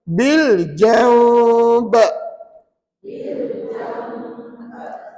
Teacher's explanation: iqlab iaitu nun mati jumpa dengan Bai maka dengungnya dua harakat